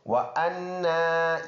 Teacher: الف مدہ ہے وَأَنَّا یہ حمزہ ہے، نون کے اوپر کڑی زبر ہے، اس میں غنہ ہوگا ایک الف کے اندازے کے مطابق پکا غنہ